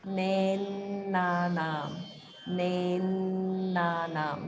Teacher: There's a double na and there's holding on that. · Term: holding after dirgha